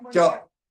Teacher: The laminal only touches cha. And when we are saying cha here, it spreads and the anterior dorsal touches the palatal.